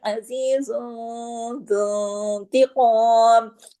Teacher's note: इख्फा हकीकी गुन्ना कामिला होगा, यानी दूसरे दर्जे का गुन्ना होगा, आवाज थोड़ी नाक में जाएगी।